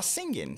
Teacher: On ne va pas prononcer le g à la fin du mot, on dira singing, tout simplement.